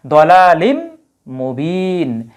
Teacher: তানুইনের পরে যদি মিম আসে তাহলে এই ইদগাম করতে হয় তানুইনের পরে মিম আসলে কি হয় ইদগাম করতে হয় অর্থাৎ একসাথে উচ্চারণ করতে হবে তাইলে দলালিম মিমের মধ্যে চলে যাবে তখন আর এই জায়গায় আলাদা